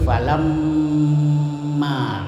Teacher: Seperti falamma, nah, itu mim bertasdid harus didengungkan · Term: gunnah